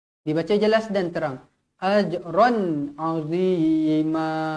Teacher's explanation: Tanwin yang selari bertemu huruf ain, izhar halqi. Dibaca jelas dan terang.